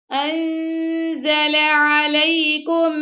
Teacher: زا کے مخرج کے پاس نون کی آواز کو چھپایا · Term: اخفا